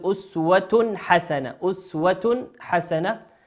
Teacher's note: التاء في أسوة هو تنوين أتى بعده حرف الحاء، والحاء من حروف الإظهار